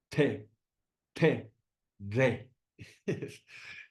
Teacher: estas retroflex, si haces T, haces la lengua hacia atrás